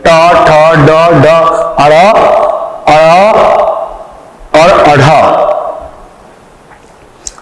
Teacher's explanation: अड़ और अढ़ भी मूर्धा से बोला जाता है। जब जीव को उलट के हम मूर्धा से स्पर्श कराते हैं तब ट वर्ग की उत्पत्ति होती है। ट, ठ, ड, ढ, अड़, और अढ़, यह मूर्धा से बोला जाता है, अतः इनकी संख्या 7 है।